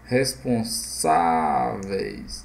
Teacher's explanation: Então, é paroxítona. O acento aqui está na penúltima sílaba, terminada em ditongo. Responsáveis. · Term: paroxítona terminada em ditongo